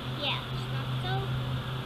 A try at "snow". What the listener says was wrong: Sounds like you're saying snot. Soft.